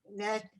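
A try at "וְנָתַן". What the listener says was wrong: That's a vav.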